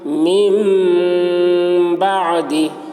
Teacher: نون ساکن کے بعد با آ رہا ہے، اس لیے نون کو میم سے بدل کر غنہ اور اخفا کے ساتھ پڑھیں گے، اس کو اقلاب کہتے ہیں۔